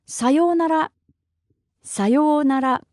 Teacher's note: in Japanese there's really no strong intonation it's just flat with no strong intonation